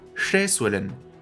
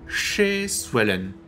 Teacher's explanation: La première syllabe a un E long, est énoncé à hauteur plus élevée que le reste du mot.